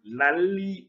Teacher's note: 두 번째 음절의 첫 소리 니은이 앞에 리을 때문에 리을로 바뀌고 그 받침 니은이 뒤에 있는 리을 때문에 또 리을로 바뀌었습니다. 그러니까 니은이 리을로 바뀐 게 두 개라고 할 수 있겠네요.